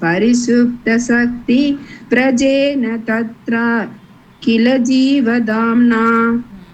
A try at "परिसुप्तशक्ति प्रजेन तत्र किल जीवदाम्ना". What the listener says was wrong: Here, don't break when there is Shakti. After Shakti, don't give a break.